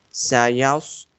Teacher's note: So you can see for sod and seen both times that simply in the transliteration the letter S is being used, but you have to read this S sound bold because it's being present in the place of sod.